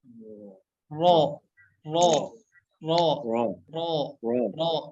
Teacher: Nah, cara baca huruf yang tebal itu dengan menaikkan gitu. Pangkal lidah kita, lidah bagian belakang kita naik ke atas. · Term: huruf ro